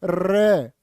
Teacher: र जीभ कांप जाएगी तुम्हारी र को प्र कंपित भी बोलते हैं और लुंठित भी कहते